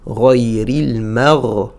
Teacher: pour le prononcer, on a besoin que les bords de la langue fassent pression au niveau des molaires